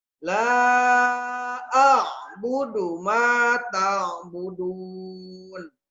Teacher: La panjang 5 harokat mad jaiz munfasil